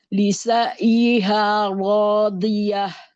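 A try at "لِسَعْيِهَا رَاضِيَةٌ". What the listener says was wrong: Dikasih bainnya pada huruf ain biar tidak seperti hamzah. Lisa'iha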